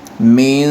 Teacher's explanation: ایک تو یہ ہے کہ یہاں اخفا کریں گے ہم، اخفا ناک اور منہ دونوں سے ادا کرنا ہوتا ہے، آواز روک کر رکھنی ہوتی ہے ناک اور منہ دونوں پہ